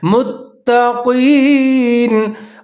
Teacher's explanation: قاف کو پھر موٹا کر کے اور یا کے ساتھ ملا کے پڑھنا ہے